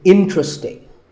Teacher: interesting but there are only three syllables and the stress is on in · there are only 3 syllables, in-tra-sting, and the stress is on in, so the word is interesting.